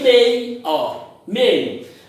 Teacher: Temos uma vogal mais uma semi. Começamos forte, terminamos fraco. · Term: ditongo decrescente